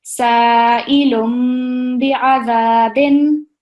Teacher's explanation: the noon sound of the tanween is going to be replaced by the meme sound, yeah. So the way you're going to read it is sa'ilum bi'adhabin.